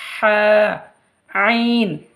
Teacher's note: হা উচ্চারণ হবে গলার মধ্যখান হইতে উচ্চারিত হয় একটু চাপ দিয়ে হা আইন হা আইন গলার মধ্যখান হইতে উচ্চারিত